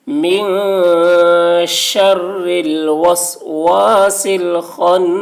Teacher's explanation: خا کی آواز موٹی ہوگی، نون مشدد غنہ.